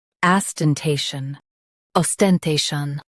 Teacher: Os, ten, te, shun, ostentation. Emphasize te and keep shun light.